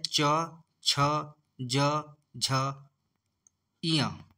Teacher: च वर्ग में होता है च, छ, ज, झ, ञ। तो यह आता है दोस्तों तालव्य वर्ग में